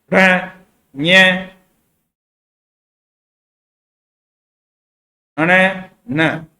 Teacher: ये पंचम वर्ण है जो नासिका से बोले जाते हैं, यानी आपको बोलोगे इनसे तो इनके आपके एक हाथ से आप नाक को बंद करके बोलोगे तो इसकी सही ध्वनि आपको महसूस होगी।